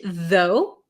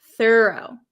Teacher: Though has a vocalized TH, though, and thorough does not. We don't say thorough.